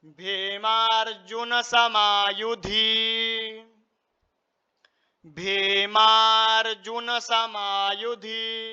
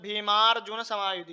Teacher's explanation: अत्रशुरा महेश्वासा अत्रशुरा महेश्वासा भीमार्जुन समायुधी भीमार्जुन समायुधी यहां पर जा के ऊपर भी लगा र लगा हुआ है तो र जो है वह अक्षर से पूर्व में उच्चारण करा जाएगा